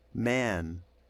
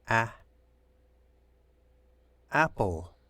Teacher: to be open much wider than with man man so the the mouth is not open quite as wide when the a is followed by an N or an M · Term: nasalized A